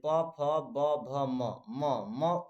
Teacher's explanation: जैसे आप म बोलेंगे तो आपका ओठ सटेगा, ओठ आपका दोनों ओठ सटेगा